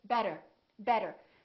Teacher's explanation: So, for example, when we say the word better, we have a vowel, T, and another vowel. This T changes and it becomes this fast D sound.